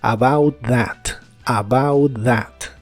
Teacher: la th de that suena como una d vibrante